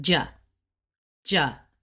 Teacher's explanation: fourth tones go really fast like stop like sudden